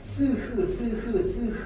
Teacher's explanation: 공기가 나오는 통로를 좁혀 가지고 마찰시키면서내는 소리. 그래서 마차를 공기가 나오는 통을 한 번도 막은 적이 없죠.